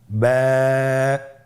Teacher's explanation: বা হরফে টান হবে। এক আলিফ টান।